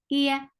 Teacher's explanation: You are lifting the middle part of your tongue towards your palate, but it is not touching your palate.